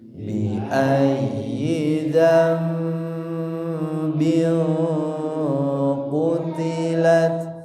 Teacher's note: Di sini selanjutnya ada juga dengung yang kedua, tanwin yang dibaca samar dan dengungnya ditahan sama ya karena bertemu huruf qaf. Dan di sini tanwinnya dengungnya ditebalkan karena huruf di depannya huruf tebal ya.